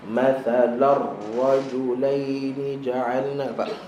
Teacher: tanwin berjumpa lam atau ra, maka tidak ada dengung. Bila tidak ada dengung, maka jangan bagi ada gap, jangan bagi ada ruang, okey, antara tanwin dengan sabdu.